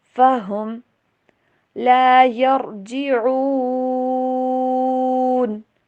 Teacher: ہاں کی آواز کلیئر، اور میم کے اوپر بالکل بھی غنہ نہیں کرنا